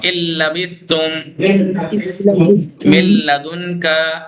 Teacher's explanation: نون کو لام میں بدل کے لام کو لام میں ادغام. اللبثتم من لدن کا، نون کی آواز نہیں آنی چاہیے، من لدن کا. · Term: بغیر غنہ